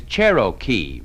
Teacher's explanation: You notice you roll the R in Cherokee.